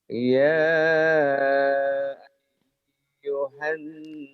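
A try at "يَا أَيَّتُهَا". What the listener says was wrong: Bukan, bukan ya ayuhan, enak aja. Ada taknya ini. Ya ayat Tuhan, bukan ya ayuhan. Tanya kelewat. Ayo, ya ayat Tuhan. Ya ayyatuhan nafsul mutmainnah.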